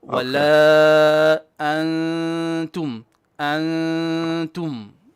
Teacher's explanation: On the antum, we have something what we call ikhfa. So we do kind of a 2 beats of gunna.